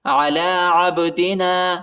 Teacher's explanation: با کے اوپر قلقلہ ہے، ٹھیک ہے، با کو جھٹکا دینا ہے